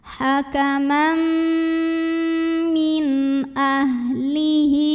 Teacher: Maka nun sukun kita bunyikan dengan jelas. Jadi bunyinya n dan tidak perlu ditahan. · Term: izhar halqi